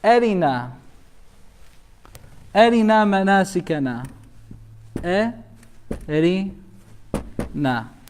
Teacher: this is the example when ra is muraqqaqa, light sound, empty mouth. The pronunciation of ra, it comes in an empty mouth way.